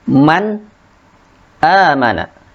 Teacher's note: nun sukun bertemu dengan hamzah, dibaca man, jelas, tidak mal, akan tetapi dibaca jelas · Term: izhar